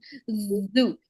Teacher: the tip of the tongue slightly comes out, and the tip of the tongue is actually vibrating when we take out Dhu sound